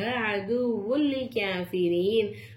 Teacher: அப்ப நம்ம என்ன செய்யணும், ஒரு எழுத்தை இன்னொரு எழுத்தை ஜாயின் பண்ணி குன்னா செய்யாம ஓதணும் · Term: இதகம் பிலா குன்னா